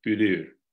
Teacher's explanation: Musaler in general has developed an U, a front high rounded vowel